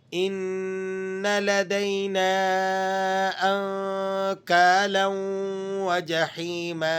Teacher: نون کو آپ نے مشدد ہونے کی وجہ سے سختی سے بھی پڑھنا ہے اور غنہ بھی ادا کرنا ہے۔ غنہ ادا کرنے کی وجہ یہ ہے کہ نون اور میم جب بھی مشدد ہوں تو ان پر غنہ کرنا ہوتا ہے آپ نے۔